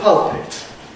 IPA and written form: ˈpʌlpɪt (pulpit)